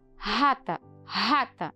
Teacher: outro jeito de nós falarmos R vibrante alveolar evozeada